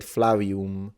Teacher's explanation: He said Flavium with a W.